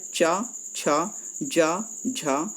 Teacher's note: यह तालाब विवरण कर रखे यानि तालाब से बोले जाते हैं तालू जो हमारा होता है ना वह तालू से टकराती है